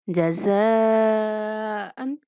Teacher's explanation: اس مد کو 5 الف کے برابر کھینچنا ہے، لمبا کرنا ہے